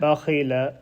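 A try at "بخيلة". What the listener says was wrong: Not ba.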